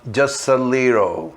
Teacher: Repare quando eu pronunciei just a little, eu juntei o T com o I, eu nem falei o T, fica just a little. Juntei o S, matei o T e juntei o S direto no A